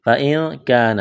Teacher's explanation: اخفا کریں گے. نون ساکن کے بعد کاف ہے.